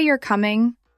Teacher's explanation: If I say you're coming, falling tone, that sounds like a statement.